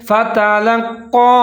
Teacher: فا کے اوپر زبر ہے، تا کے اوپر زبر ہے، لام کے اوپر زبر ہے۔ ان تینوں حرف کو آپ نے باریک پڑھنا ہے، لیکن آگے جو قاف ہے اس کے اوپر تشدید ہے تو لام اور قاف کو ملا کے پڑھیں گے، لیکن آپ نے قاف کی آواز کو موٹا پڑھنا ہے اور اس کے اوپر چھوٹی مد ہے، تھوڑا سا لمبا کر کے پڑھیں گے فتلقى۔